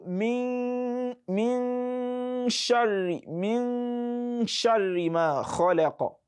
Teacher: You take your time a bit on the nun so that the gunna sound will come naturally. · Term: ikhfa